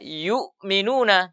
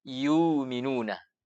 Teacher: dibaca dengan tidak menahan makhrajnya huruf hamzah. Tidak ditahan maksudnya tidak ditekan suara.